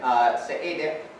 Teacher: Seediq, you have to open your mouth wide and make a kind of K or G sound. But it's not made in the same place that a K or G sound is made. It's made with your uvula.